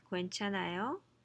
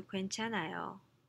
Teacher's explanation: if you use a question mark at the end with a rising intonation